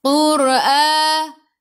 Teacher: Sebelum ra ada baris depan kena baca dengan tebal. Tafkhim nama dia.